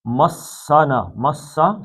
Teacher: سین سے سیٹی کی آواز، سفیریا کہتے ہیں اس کو